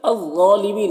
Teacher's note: الف لام حروف شمسی ظا کے شروع میں ہے تو الف لام دونوں کو نہیں پڑھیں گے، اور ظا کو پر پڑھیں گے، یہ حروف مستعلیہ میں سے ہے، کھڑا زبر ہے، ایک الف کے برابر کھینچیں گے۔